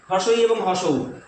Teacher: তাহলে সংবৃত্ত মানে উচ্চ স্বরধ্বনি হবে দুটো, হর্ষই এবং হর্ষৌ, এরা উঁচুতে উড়ে চলে যেতে চাইছে